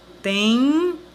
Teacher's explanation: a sílaba terminaria em M e junto com o E teria o som nasal de em. Então, por esse motivo, em alguns casos, existem outros encontros que também não são encontros consonantais.